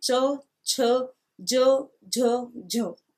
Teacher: और इसका उच्चारण स्थान होता है तालु। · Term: चै वर्ग